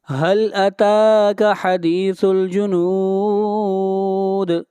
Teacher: تا کو کھینچ کر پڑھیں گے، تا کے اوپر کھڑی زبر ہے